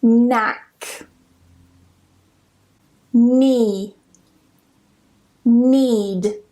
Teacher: Basically, whenever you get this combination of K and N together at the beginning of a spelling, we just don't pronounce the K. It's completely silent.